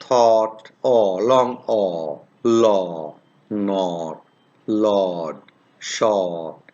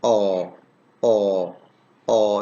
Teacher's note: are coming from the back part of the vocal tract and it's between half closed and half open and rounded position · it's a long vowel this is produced in the back part of the vocal tract